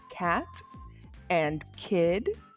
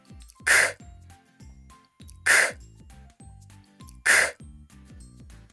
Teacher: press the back of your tongue against the roof of your mouth your teeth can be slightly apart and your lips relaxed block the air flow for a moment then let it out with a burst your voice is off and your throat should feel calm without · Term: C sound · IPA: /k/